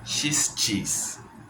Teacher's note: La SH es más aireada. Yo lo puedo decir hasta que se me quede sin aire, mientras que la CH es cheese y se murió. Es un sonido instantáneo.